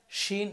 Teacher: শিনের উচ্চারণটা হবে আওয়াজ ছড়াবে, এটা হচ্ছে তাফাসসির হরফ, আওয়াজ ছড়াবে।